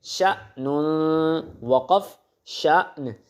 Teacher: حمزہ کے اوپر جب جزم آئے گی تو اس کو جھٹکا دیں گے ہم